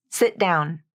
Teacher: you use the stop T to smooth out the connection between the final T and the next word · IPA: /ʔ/